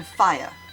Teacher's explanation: Dong, a gliding vowel like the i in light. Tripong, a complex glide of three vowels in one syllable